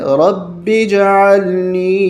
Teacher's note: یہ الف نہیں پڑھا جاتا، با کو جیم کے ساتھ ملایا جاتا ہے